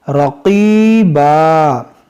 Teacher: موٹا کریں گے اور یہاں قاف بھی موٹا کریں گے، رقیبا، یہ یا مدہ ہے، یا ساکن سے پہلے زیر ہے، تھوڑا کھینچیں گے